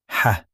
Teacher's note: h is like a soft, breathy h, but deeper.